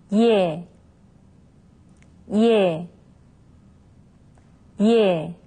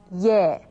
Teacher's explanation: it's a combination of the vowel sound yaw and the sound e